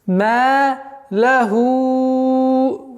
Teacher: Удлиняем в размере 4 огласовок и переходим на хамзу. И нужно быть очень внимательным, чтобы после удлинения звук хамза произносилось четко и ясно.